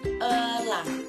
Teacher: Nah, vokal selanjutnya ada E, berada di pusat dengan vokal tengah dan bentuk mulut tak bundar.